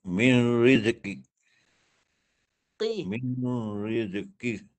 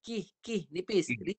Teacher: Guna pangkal lidah kalau tak naik pangkal dia jadi kaf. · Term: qaf